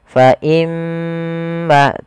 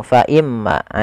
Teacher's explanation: ada huruf mim yang berharakat tasdid kita hukumi dengan bacaan gunah cara membacanya adalah menahan suara gunahnya